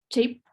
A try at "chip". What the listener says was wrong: Okay, so you still said cheap. Say ch. Ch. Chip. Chup. Chup. Chup. Chup. are used in Russian and French and in all languages, Spanish, that this, it's an E sound. Right? Like in Russian, it's like this, right?